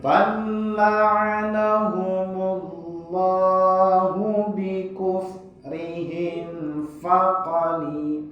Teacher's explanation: Yaitu apabila mim mati bertemu dengan selain huruf mim dan ba. Cara pengucapannya adalah mim harus tampak jelas tanpa guna. Nah ini terutama ketika bertemu dengan huruf fa dan waw. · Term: Izhar syafawi